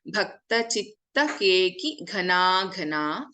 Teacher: Keki Ghana Ghana, Gha and another Gha. Both are Mahapranaksharas.